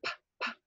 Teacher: the stop sounds have a really light aspiration